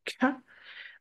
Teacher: quand vous mettez la main devant la bouche et que vous prononcez K, vous allez sentir l'explosion d'air contre vos doigts. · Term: le son K